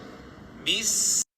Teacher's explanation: huruf sin, huruf ada angin di bahasa tajwid, huruf ada angin. Bis dan rakhawah, panjang sikit.